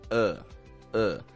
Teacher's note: unstressed Quick Flat quiet sound we don't stretch it out we don't raise our pitch